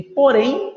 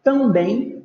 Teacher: ou seja a sílaba tônica é a última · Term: oxítonas